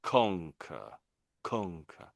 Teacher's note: it's loud at the front of the word, then it gets quieter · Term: emphasis on the front